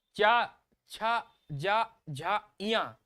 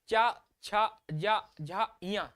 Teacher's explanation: हमारे जो तालब वाला जो क्षेत्र है उससे आवाज आ रही है